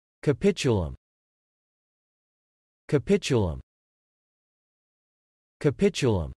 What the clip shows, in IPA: kəˈpɪtʃ ə ləm